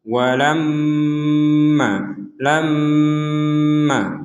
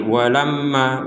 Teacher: Di sini ada mim bertasydid, maka kita membacanya dengan dengung.